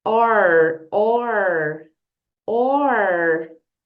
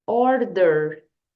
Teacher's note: com a teacher Order perceba que temos aqui a letra R Então você tem que fazer aquele r bem caipira puxa bem